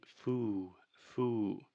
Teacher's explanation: she is creating too much of a circle with her mouth at the end of the word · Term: lip roundedness